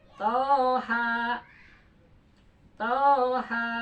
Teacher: Toha jadi to 2 harkat, ha juga 2 harkat. 2 tambah 2 4.